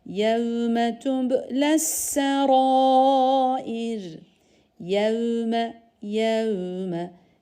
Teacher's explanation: vav ince yumuşak yev diye kalın yapmıyoruz